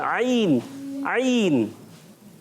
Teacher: عین تو حلق کے درمیان والے حصے سے ادا ہوتا ہے